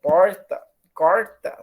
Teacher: A gente vai saber que é uma R caipira lá de São Paulo